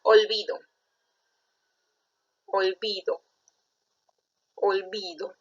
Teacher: la mayor fuerza de voz está en bi, no está en do. Si la mayor fuerza de voz estuviera en do, ahí sería aguda.